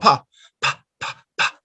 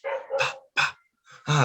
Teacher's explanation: Bilabial, plosive, no? Voiceless.